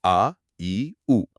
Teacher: ये द्विमात्रिक होते हैं, यानी इनमें दुगना समय लगता है। मतलब 2 बीट्स। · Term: दीर्घ